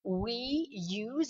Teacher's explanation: imaginez un Y invisible entre le we et use